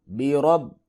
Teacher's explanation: را کو پر کر کے پڑھیں گے کیونکہ اس کے اوپر زبر ہے، جب را کے اوپر زبر یا پیش ہو تو اس کو پر کر کے پڑھتے ہیں۔